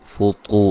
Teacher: طا کو موٹا ادا کریں گے، واو مدہ ہے